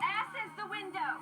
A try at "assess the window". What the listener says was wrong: It's assess the window. You put the wrong emphasis on the wrong syllable.